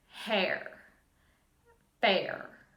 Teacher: there's just that little bit of a stop back in your throat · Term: glottle stop